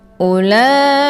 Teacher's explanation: Ulaika ini tetap dibaca pendek, dan untuk waw yang ada di sini ini merupakan waw ziyadah, jadi bukan waw huruf mad, jadi nggak usah dibaca panjang. Hamzahnya cukup dibaca satu harokat saja.